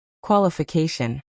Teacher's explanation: The stress is on the fourth syllable, so make sure you nail it to sound natural.